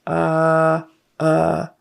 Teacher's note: when you just open your mouth and uh uh or like someone punched you in the stomach that's the short u sound